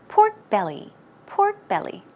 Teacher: stress goes right here on the belly